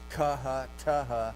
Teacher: unvoiced, plus aspiration